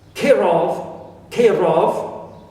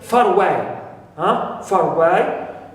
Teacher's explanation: Far away, far alone, not pronounced, but when we have away, word starts with a vowel, we pronounce the R, and we say far away, far away. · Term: linking R